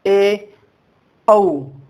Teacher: अर्ध विवृत स्वर मतलब वे स्वर जिनके उच्चारण मुख द्वार आधा खुलता है। यहाँ लिखा ही है अर्ध।